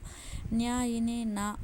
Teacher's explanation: న్యా ఇని నా మా అనునవి అనునాసికాలు, ముక్కు సహాయంతో పలుకుతాము